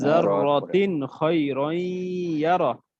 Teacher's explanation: তাহলে ইয়া আসলে গুণনা করতে হবে, কারণ এটা ইদগামে বা গুণনা। কিন্তু আবার খ আসছে, কারণ এটা ইজহার, এই জন্য এখানে গুণনা হবে না।